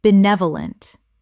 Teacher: Four syllables with the stress on the second